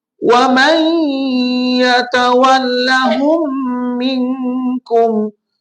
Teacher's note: Wa may, dia idgham masuk kepada ya. Nun tu bunyi dia masuk kepada ya